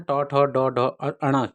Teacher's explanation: उच्चारण मूर्धा से होता है जहां जीवा का अग्र भाग उलट कर मूर्धा को स्पर्श करता है